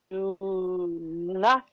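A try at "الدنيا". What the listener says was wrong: Ad dunya. Ad dunya. Lam is silent, but we will pronounce alif. Ad dunya.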